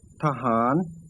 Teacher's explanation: the unwritten vowel is realized as a short ah sound. Recall that otherwise, an unwritten vowel is pronounced as short o.